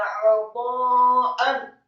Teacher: Kata 'ata'an, ain ditekankan fathah satu harokat, kemudian huruf ta-nya dibaca fathah dengan mad yang sempurna 4 sampai 6 harokat. Membaca huruf ta dibaca tafkhim tebal dengan posisi lidah di langit-langit atas.